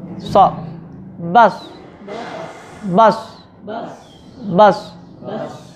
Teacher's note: Kita sod kalau memiliki si isti'la, berarti si lidahnya itu terangkat ke atas.